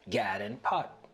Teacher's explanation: The lot trap vowels are reversed for God and pat to sound like gad and pot